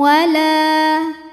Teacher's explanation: sebab ada Alif didahului baris fathah maka huruf lam panjang dua harakat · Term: Mad Thobi'i